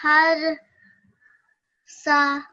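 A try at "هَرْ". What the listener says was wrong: So when you were first reading it, the first thing that you did was you made this a kalkala sound. Okay, a ra is not a kalkala sound. Okay, they just be har. Okay, not harra.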